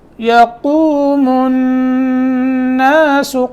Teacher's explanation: قاف موٹا اور آگے نون کے اوپر غنہ